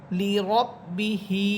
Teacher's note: এই হা একদম বাতাস ছেড়ে দিয়ে পড়বেন